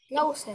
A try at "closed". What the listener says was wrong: Closed. Not closed. Closed. Duh, with a D sound at the end.